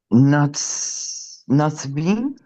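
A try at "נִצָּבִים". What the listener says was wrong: Close. Give me an E sounding vowel. Nitzavim.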